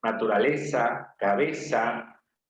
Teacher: en el continente americano la mayoría no usamos la z española usamos la s